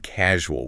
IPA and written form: ˈkæʒuəl (Casual)